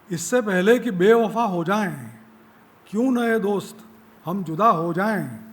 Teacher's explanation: છેલ્લો જે એ છે એ આમ તો વિવૃત્ત દીર્ઘ છે પણ એનો રસ્વ ઉચ્ચાર ખટકતો નથી